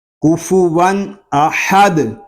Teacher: تنوین کے بعد حروف حلقی میں سے حمزہ آ گیا ہے، اس لیے یہاں پر اظہار ہوگا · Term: اظہار حلقی